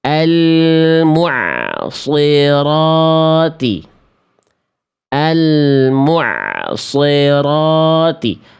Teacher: Kasroh itu vokal I. Vokal I-nya nggak jelas. Karena kita fokus cuma nebelin shadnya aja. Sli. Harusnya sli.